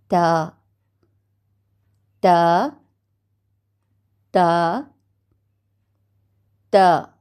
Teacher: ता की अदायगी ज़बान की नोक को सनाए उलिया की जड़ से लगाकर